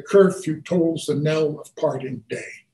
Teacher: they alternate weak strong weak strong weak strong so that the stronger stress syllables occur in the even positions the weaker ones in the odd positions and i've given you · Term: iambic pentameter